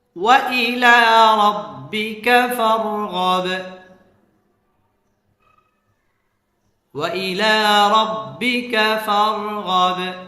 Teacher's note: ফার রটা পুর হবে, ফারগব বা কলকলা হবে